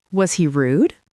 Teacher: His voice went up at the end. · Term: rising intonation